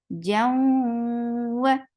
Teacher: this is idgham with gunna. So you are keeping the sound in your nose for a longer time. Jam, wow is very short for the wow, circle your lips for fatha, open your jaws, and then attach with ha.